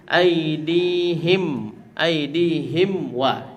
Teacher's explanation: ketika di izhar syafawi ini huruf fa dan juga huruf waw keluarnya sama-sama dari bibir. Jadi kita harus hati-hati supaya dia tidak menjadi ikhfa.